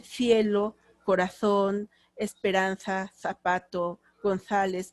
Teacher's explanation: la cee y la z son interdentales · cuando van a pronunciar Cs y Zs, la lengua la colocan entre los dientes. Digan González, pero las Zs pongan la lengua en medio de los dientes. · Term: el ceceo